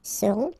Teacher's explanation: final T not pronounced, and then you get this nasal, on, seront